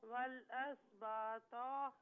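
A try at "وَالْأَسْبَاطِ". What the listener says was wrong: نہیں تو کو نہ کھینچیں، والاسباط با کو جو ہے نارملی پڑھیں، تو کو پر پڑھنا ہے۔ والاسباط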